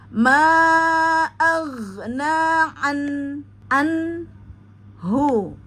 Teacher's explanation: Pastikan an ya jangan a ya karena dia ada di tengah tenggorokanna an ya. Kemudian pastikan pada nun sukun jangan sampai terpantul. Jadi ditahan dulu agar tidak terjadi pemantulan